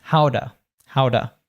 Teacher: because it's a T between two vowel sounds, between the and the ow of how, it becomes howda